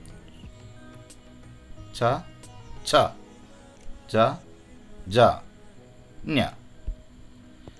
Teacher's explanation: తాళవ్య, ఇక్కడ చ ఉంది కాబట్టి చవర్గా అంటారు ఈ లైన్, చవర్గా. ఇవి మిడిల్ ఆఫ్ మౌత్